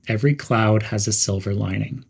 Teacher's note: Stress every and cloud evenly.